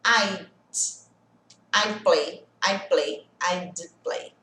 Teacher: O som do D bem leve, bem sutil.